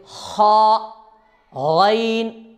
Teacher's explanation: اب اس میں ایک بات کو ذہن میں رکھنا ہے کہ خا اور غین جب ہم پڑھیں گے تو گلے کے اندر، مطلب حلق کے پاس جہاں سے نکلتے ہیں وہاں تھوڑی کھرکھر کر کے آواز آتی ہے، جیسے خا غین، یہ اس کا صحیح مخرج ہے۔